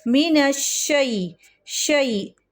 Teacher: یا لین کو ایک حرکت سے ذرا سا بڑھاتے ہیں، 2 تک نہیں جاتے۔ مینش شی، شین زبر شا اور یا ساکن شی۔